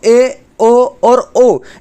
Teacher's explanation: जो मुंह है दोस्तों वो आधा खुलता है। पूरा नहीं खुलता है। उसको हम अर्ध विवृत्त स्वर कहते हैं। मैंने आपको बताया कि अर्ध का मतलब ही आधा होता है।